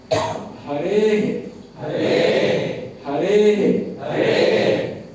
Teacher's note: मतलब हे उच्चारण नहीं करना है, छोटा सा हे आएगा, क्योंकि पूरा हे की तरह नहीं आएगा। यही है, विसर्ग का जो उच्चारण है वो ह को लेकर के आएगा, लेकिन समय उस ह के उच्चारण का आधा देना है, इसीलिए अर्ध कहा जाता है, हाफ नहीं लगना चाहिए।